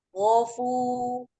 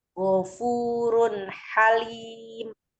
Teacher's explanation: Ada matobi'i waw dibaca 2 harokat karena sebelumnya ada domah.